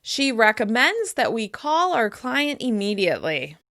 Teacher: I'm stressing the verb in the request, and I'm also stressing the action that she wants us to take.